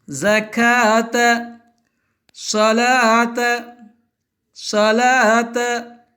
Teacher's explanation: ஜகாத்த என்பதில் வாவிற்கு மேலே பெருக்கல் குறியிட்டு வாவை உச்சரிக்க கூடாது